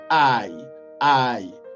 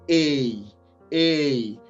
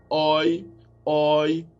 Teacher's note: les deux forment une diphtongue, c'est-à-dire elles se prononcent en même temps